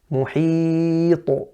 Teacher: The qalqala is loud, it's kubra again because it's the end of a word and you're stopping there. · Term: qalqala kubra